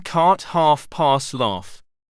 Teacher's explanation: Hollow right pointing triangle, as in cart, half, pass, laugh. This is an open vowel. The lip position is neutral.